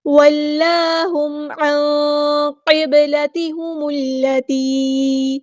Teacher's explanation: واللہم، ہاں ہم سمپل ادا کریں گے اور میم ساکن پر ہم ٹائم نہیں دیں گے، اظہار شفوی ہو رہا ہے۔ واللہم عن قبلتہم التی، نون ساکن کی آواز کو ہم یہاں پہ چھپا دیں گے، عین کو غصہ لیکن ہم تھروٹ سے ادا کریں گے۔ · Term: اخفا